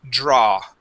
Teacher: the AW in most words will not make an ow sound. You had pronounced an oo at the end. It creates an ah sound only.